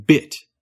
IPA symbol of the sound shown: ɪ